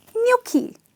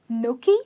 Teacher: there is an invisible Y here which doesn't appear in the spelling but definitely comes in the production